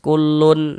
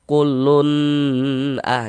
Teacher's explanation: teks tersebut dibaca dengan jelas tanpa bersenandung atau nasalisasi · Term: izhar halqi